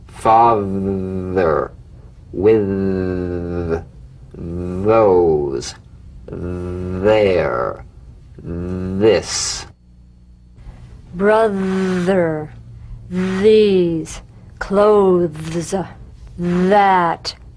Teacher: the voiced tongue point to teeth fricative th · slip the rim of the tongue between the teeth and sing, feeling a buzz or vibration. Feel that vibration on the tongue outside the teeth. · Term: voiced th